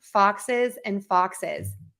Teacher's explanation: if it ends in a sound that has a more hissing quality, that's called a strident, we are going to add an is to the end